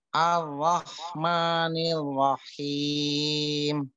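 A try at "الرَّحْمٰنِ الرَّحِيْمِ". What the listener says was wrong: nanti ro-nya ditafkhimkan. Caranya memang untuk menaikkan pangkal lidah memang butuh proses, nanti pelan-pelan, nanti insya Allah dilatih lagi. Ar-Rahmanir Rahim. Seperti itu.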